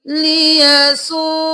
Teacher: واو کو 5 الف کے برابر کھینچا اور حمزہ کو 1 الف کے برابر کھینچا، الٹا پیش ہے، ٹھیک ہے۔